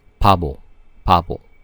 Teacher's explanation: Sound value is B, but it becomes like P in the initial position